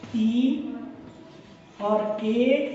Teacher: तो जीभ जो होती है, जैसे हम बोलते हैं तो बोलते समय जो भाग हैं, हिस्से हैं, तो जो ई ए बोलेंगे तो इससे क्या होगा, हमारी जीभ में आगे का भाग में वो सक्रिय हो जाएगा। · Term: अग्र स्वर